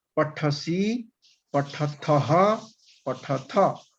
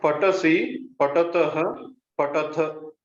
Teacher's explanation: Mahaprana is not coming out directly. You are telling ta. I'm telling tha.